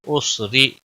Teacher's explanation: را زیر کی وجہ سے باریک پڑا جائے گا، را یہاں پر موٹا پڑا جائے گا، اور وقف کی صورت میں وقف بالابدال ہوگا، تنوین کو بدل کر ایک زبر کے ساتھ حروف مد بن جائے گا، مد کے ساتھ وقف ہوگا، ایک الف کے برابر کھینچ کر وقف کریں گے۔